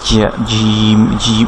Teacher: জিম হচ্ছে জিহ্বার মাঝখান থেকে উচ্চারিত হয় এবং জিম এটার নোক্তা থাকে হচ্ছে নিচে এবং জিম উচ্চারণের সময় কোনো বাতাস বের হবে না, জিম জিম এরকম বাতাস বের হবে না।